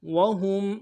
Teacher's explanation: یستطیعون نصرہم وہم، وہم، واو کو نرم سے ادا کریں گے، ہا کو میم ساکن کے ساتھ ملانا ہے، غنہ کریں گے میم ساکن میں